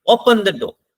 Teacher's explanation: हम सारा जोर तो शुरुआत में लगा देते हैं ऑर्डर में, डोर तक आते आते तो हम नीचे हो जाते हैं · अब देखो ओपन तो हम जोर से बोल रहे हैं, डोर पे आते हुए हमारी आवाज डाउन हो गई। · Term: फॉलिंग टोन